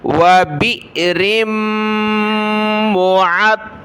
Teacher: حمزہ ساکنہ جھٹکا دیا، را کو آگے میم کے ساتھ ملانا ہے